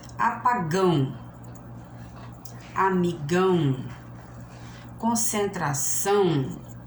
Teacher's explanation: As oxítonas, o que são as oxítonas? São as palavras que o acento ou a sílaba forte está na última sílaba.